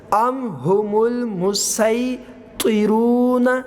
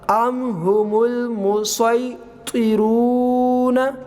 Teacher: سین کے ساتھ بھی پڑھ سکتے ہیں اور سواد کے ساتھ بھی پڑھ سکتے ہیں